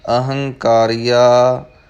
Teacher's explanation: ਅਹੰਕਾਰੀਆ, ਇਹ ਪਾਠ ਬੋਲਣ ਲੱਗਿਆਂ ਦੋ ਗੱਲਾਂ ਦਾ ਧਿਆਨ ਰੱਖਣਾ ਹੈ। ਪਹਿਲਾਂ ਐੜਾ ਜ਼ਰੂਰ ਲਾਉਣਾ ਹੈ, ਹੰਕਾਰੀਆ ਨਹੀਂ ਕਹਿਣਾ। ਅਤੇ ਦੂਜਾ, ਕੱਕੇ ਦੀ ਜਿਹੜੀ ਆਵਾਜ਼ ਹੈ, ਧੁਨ ਹੈ, ਉਹ ਕੱਕੇ ਦੀ ਹੀ ਆਵੇ, ਘੱਗਾ ਨਾ ਬਣ ਜਾਵੇ।